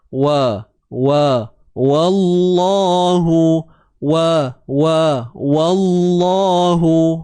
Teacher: Nipis je, wa. Kalimah Allah tu yang tebal.